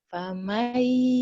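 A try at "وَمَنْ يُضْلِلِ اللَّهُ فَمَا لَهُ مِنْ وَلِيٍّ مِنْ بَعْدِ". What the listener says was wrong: Wa, bukan fa. Wa may. Wa may.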